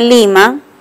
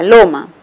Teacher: La oposición se está dando entre la I, que es anterior, y la O, que es posterior.